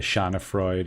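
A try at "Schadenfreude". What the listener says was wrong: there's an extra syllable at the end for the E for some reason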